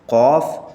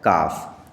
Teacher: قاف آپ اس کو حلق سے نکالیں گے، اور یہ بغیر حلق سے نکلتے ہیں، یعنی نارمل طریقے سے نکل جائے گا یہ، جیسے کاف۔ تو یہ جو آپ نکالیں گے یہ حلق سے نکالیں گے، اور یہ حلق سے جب نکلے گا تو قاف کی آواز آنی چاہیے۔